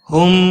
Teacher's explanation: میم مشدد پر غنہ ہوگا، میم ساکن کے بعد جب بھی دوسرا میم آتا ہے ادغام شفوی ہوتا ہے، غنہ کے ساتھ پڑھیں گے۔